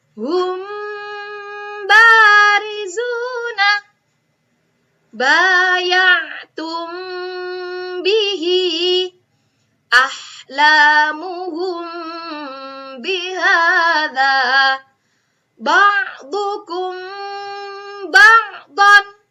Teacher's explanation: cara bacanya dengan cara disamarkan mim ketemu ba ya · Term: ikhfa syafawi